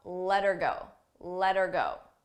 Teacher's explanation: You don't hear the H, but I also attach it to the word before.